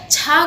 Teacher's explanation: इसी प्रकार से यदि पूछा जाए छा का उच्चारण स्थान क्या है, तो आप देखिएगा छा का उच्चारण स्थान तालु से होता है